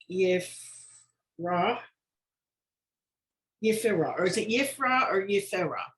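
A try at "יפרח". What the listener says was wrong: It's Yif, and then don't forget that last letter. You've got to pronounce it Yif. Rach.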